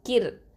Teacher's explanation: ரா சுக்குன் வந்து லைட்டாதான் உச்சரிக்கணும் ஏன்னா ரா சுக்குனுக்கு முன்னாடி என்ன எழுத்து இருக்குது கெஸ்ரா பெற்று வந்திருக்குது அப்ப